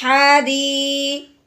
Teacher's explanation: اب آپ کو کہیں بھی یا ساکن نظر آئے اور اس سے پہلے زیر آ جائے، یا ساکن ہے اس سے پہلے زیر ہو تو ہم نے اسے ایک الف کے برابر لمبا کر دینا ہے